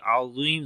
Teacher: Za we read in heavy sound, and also we long due to yamadda.